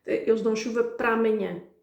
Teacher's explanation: it ends with an 'a', and then 'amanhã' starts with an 'a', two vowels, so they sort of like clash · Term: bind words